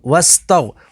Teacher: غین حروف مستعلیہ میں سے تو اسے پوری یعنی موٹا پڑھیں گے